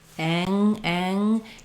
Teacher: My mouth is a little more open there. When I'm getting ready for that ng, it means that my ah vowel will be a little bit more closed, a little bit more nasal.